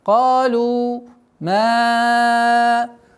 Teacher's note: Долгота в размере 4 огласовок, фатху удлиняем. Ма антум. После долготы четкое произношение буквы хамза с фатхой.